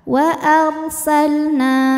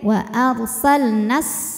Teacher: Kalau berhenti panjang kalau diterusin Jadi pendek